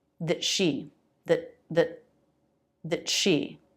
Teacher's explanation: If the next word begins with a consonant, then it's a stop t.